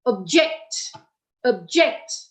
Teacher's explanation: if it is a verb the stress that means the emphasis or the force of our energy is on the second syllable